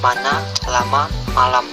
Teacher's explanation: konsonan m kriteria bunyi bilabial nasal bersuara